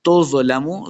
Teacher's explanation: ضا کو موٹا کر کے پڑھنا ہے.